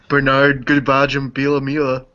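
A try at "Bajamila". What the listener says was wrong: Baja Biamila. Don't say the G. It's just Baja Biamila.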